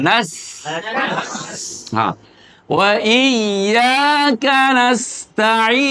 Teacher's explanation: সিনের ভিতরে সাকিন হলে আওয়াজটা আমরা জারি রাখবো, মানে একটা আওয়াজ বাতাস চলবে।